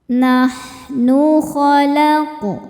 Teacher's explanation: Sebab ada huruf qalqalah yaitu qof yang sukunnya ini sukun asli dan ada di tengah bacaan. Cara membacanya qof kita pantulkan dengan pantulan yang kecil. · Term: qalqalah sugro